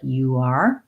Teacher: Or you are, sounds like you are, there's the hidden W sound.